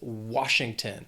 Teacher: 3 syllables, stress is on that first syllable